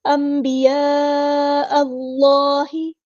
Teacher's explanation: ہے، اللہ کا لام ہمیں یہاں پہ پورا ادا کرنا ہے، حمزہ کو لام کے ساتھ ملا دیں گے، حمزۃ الوصل ہمارا ڈراپ ہو جائے گا · اللہ کا لام ہیوی یعنی موٹا ادا کریں گے کیونکہ فتح آئی ہے